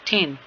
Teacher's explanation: Dental sound कैसे है? दोनों दांत जो हैं वो एक दूसरे के साथ टच करते हैं